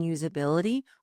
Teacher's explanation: Notice that the S in usability actually sounds like a Z. There's a slight vibration.